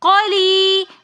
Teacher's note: یا مدہ ہونے کی وجہ سے ہم یہاں پر قلی، اس کو ایک الف کی مقدار کھینچ کر پڑھیں گے